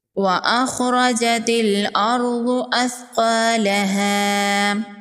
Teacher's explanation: ضاد حروف مستعلیہ میں سے ہے، ضاد کو پر پڑھیں گے، ثا کو نرمی سے پڑھیں گے